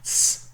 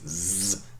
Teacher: The second is the voicing, whether you switch on your vocal cords or don't when you pronounce it. So that would be the difference between s, for example, no vocal cords, z, switched on.